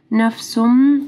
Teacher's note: نفسم تنوین ہے، اس کے بعد میم مشدد ہے، غنہ ہوگا ٹھیک ہے. ادغام آ رہا ہے غنہ کے ساتھ.